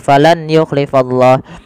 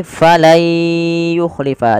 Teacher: Diganti suara nunnya menjadi suara ya. Kemudian langkah kedua ditahan dengan gunnah.